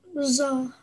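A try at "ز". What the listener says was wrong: But I think you incorrectly pronounced it as Ra.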